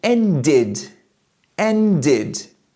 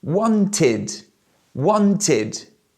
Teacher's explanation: when the verb ends with a T or a D sound, the pronunciation of the ED is simply id.